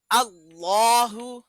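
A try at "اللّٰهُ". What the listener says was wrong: যদি বলেন আল্লাহু তাহলে হয় পাতলা, কিন্তু আল্লাহ আল্লাহর শব্দের লামের ডাইনে যদি জবর বা পেশ থাকে তখন লামকে মোটা করে পড়তে হবে,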